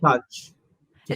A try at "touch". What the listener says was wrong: this O isn't there. To touch. It's more of a sound. Touch.